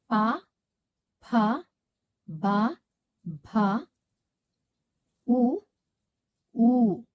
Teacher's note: ಈ ಅಕ್ಷರಗಳನ್ನು ನಾವು ತುಟಿಯ ಸಹಾಯದಿಂದ ಉಚ್ಚಾರ ಮಾಡುವುದರಿಂದ ಇವುಗಳನ್ನ ಓಷ್ಟ್ಯಕ್ಷರಗಳು ಎಂದು ಕರೆಯುತ್ತೇವೆ. ಪ ವರ್ಗದ ಅಕ್ಷರಗಳು ಮತ್ತೆ ಊ ಅಕ್ಷರವನ್ನ ನಾವು ಈ ಓಷ್ಟ್ಯಕ್ಷರಗಳಲ್ಲಿ ನೋಡಬಹುದು.